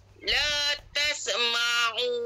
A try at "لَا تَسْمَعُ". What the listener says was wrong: Bukan tasa, bukan tasa dah. La tasma. Tasma.